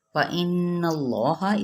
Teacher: نون پہ غنہ کرنا ہے اور زبر ہے اوپر، تو پھر اس میں جلالہ تفخیم کے ساتھ یعنی پر پڑھا جائے گا۔